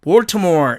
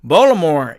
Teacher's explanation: 그래서 이렇게 T자를 제해버리고 Baltimore처럼 발음한다는 뜻입니다